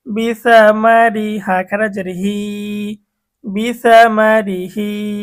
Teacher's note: 7 নং সূত্রে গিয়ে আমরা দেখব, কিন্তু শুধুমাত্র র এর নিচে জের থাকিলে বা র সাকিন ডাইনে জের থাকিলে ওই র কে চিকন করিয়া পড়িতে হয়। তাহলে এখানে র এর নিচে জের আসছে, যার কারণে আমরা র কে চিকন করব।